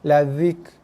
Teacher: Kemudian angin pula. Huruf kaf dia akan ada keluar hembusan nafas, hembusan angin sikit.